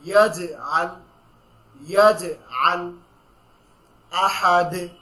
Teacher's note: জিমের উপর যখন জজম হচ্ছে তখনই আমরা একটা ধাক্কা দিয়ে পড়ব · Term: কলকলা